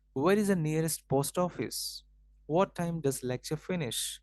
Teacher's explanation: There's a falling intonation on the last syllable of the sentence.